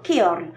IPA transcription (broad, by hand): kɛɔrl